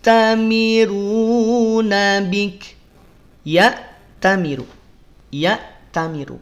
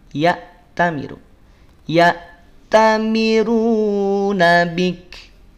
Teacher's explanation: Hamzah saat sukun maka putus bunyinya putus suaranya tidak dialirkan ya syiddah bukan rakhawah